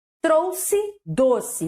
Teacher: só o o fechado em cada sílaba tônica de palavras